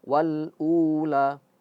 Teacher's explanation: Wal ula, u-nya juga dua dua harakat